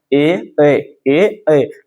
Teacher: कंठ और तालु मिल करके बोलता है ए। कंठ और ओष्ठ ओ अंदर से आवाज आ रहा है, ओ ये हमारा कंठ और ओष्ठ।